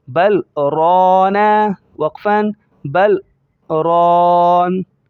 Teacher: اس کے بارے میں کچھ بتا دوں، یہ سکتہ کہلاتا ہے، یعنی جب ہم پڑھیں گے تو با کو لام کے ساتھ ملاتے ہوئے اور پھر آگے جب پڑھیں گے تو سانس کو توڑیں گے نہیں، سانس کو لے جائیں گے لیکن اندر دبا دیں گے، اسے سکتہ کہا جاتا ہے۔ جیسے بل رانا، اب سانس ایک چل رہی ہے لیکن ہم توڑ نہیں رہے اس کو، اور آگے کا لفظ استعمال کر رہے ہیں، پڑھ رہے ہیں۔